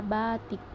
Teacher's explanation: tinggi bawah depan tak bundar apabila berada pada silabel tertutup atau silabel berkoda seperti pada kata batik yang kedua pada fonem e fonem E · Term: fonem I